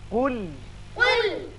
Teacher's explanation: قاف پر پڑھیں، لام کو اچھی طرح باریک